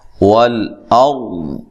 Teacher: یہاں را موٹی ہوگی، را ساکن سے پہلے حرف پر زبر یا پیش ہو تو را کو موٹا ادا کیا جاتا ہے، اور وقف کی صورت میں ضاد کو بھی اچھی طرح ادا کرنا ہے۔